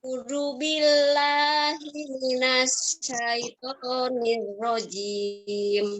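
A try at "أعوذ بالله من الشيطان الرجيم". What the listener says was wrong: Ya, minasnya itu syahnya tebal ya. Minasya. Tahan dulu. Minasya. Ya, a'udzu, zu-nya digigit lidahnya. A'udzu.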